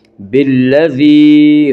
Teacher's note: وہ یا جو ساکن ہو اور اس سے پہلے زیر ہو، یا مدہ کو ایک الف کے برابر کھینچ کر پڑھیں گے